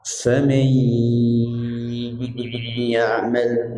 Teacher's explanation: nun sukun ketemu dengan ya, itu bi gunnah, mendengung, masuk dengan mendengung